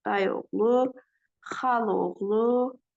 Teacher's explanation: ikinci hecadakı saitlərimiz tələffüz zamanı düşəcəklər. Olacaq dayı oğlu, yəni ı düşəcək.